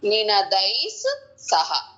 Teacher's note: జ మహాప్రాణము నినదైసః దై తర్వాత విసర్గ ఉంది దాని తర్వాత సహ ఉంది స ముందు ఉన్న విసర్గ కాబట్టి ఎస్ సౌండ్ వస్తుంది